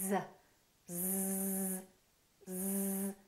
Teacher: feel a vibration on your vocal cords you do that's because Z is a voice sound we're using our vocal cords